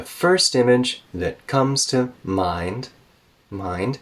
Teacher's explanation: go up with your voice again on mind because we're not done with the sentence